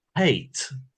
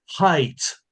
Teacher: So, for instance, the vowel in the word hate, which to me is a monophthong, in RP is the diphthong a, hate. But in Cockney, it's lower in the mouth, it's height.